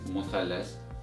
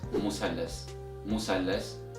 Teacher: in Egyptian Arabic dialect, the Th sound is changed to S sound. You can still pronounce it with the Th sound if you want, but we mostly pronounce it with the S sound because it's much easier and more simple.